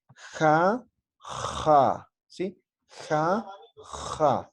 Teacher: Es más o menos como la J, pero al momento de pronunciar de forma fricativa, como si estuviera raspando, ¿no? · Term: la letra X